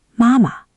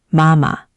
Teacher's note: When a word repeats, like mama, meaning mom. The first ma is full first tone, high and flat, but the second one goes neutral. Mama. Hear how the second one drops away?